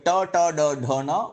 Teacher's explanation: only the tip of the tongue is touching the upper palate